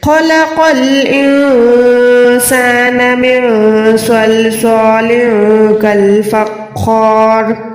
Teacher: را پہ زیر ہے تو را باریک تو ہے, لیکن یہاں پر ہم را کو ساکن کر دیں گے کیونکہ ہم یہاں پر سٹاپ کر رہے ہیں